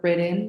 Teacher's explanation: or the backwards question mark most the time this results with n becoming the nucleus of the syllable · you can see that when you say it, that the N is the nucleus in this syllable